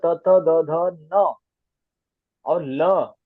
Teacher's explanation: त बोलते ही जीवा आपको कहां लगेगी दात को लगेगी